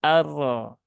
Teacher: Nah kalau sudah arro itu sudah berlebihan hm Jadi yang penting yang jelas getarnya tidak satu kali